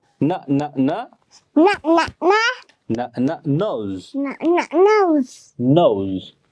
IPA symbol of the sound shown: n